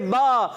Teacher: دونوں ہونٹوں کے تر حصے سے با